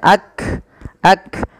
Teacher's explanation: ketika melafalkan kaf itu yang pertama adalah sifat syiddahnya dulu. Tertahannya suara ak. Yang kedua hames ya ak.